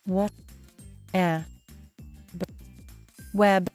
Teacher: the letter W represents the w glide sound, so your mouth needs to get ready to slide right into the vowel sound. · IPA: /w/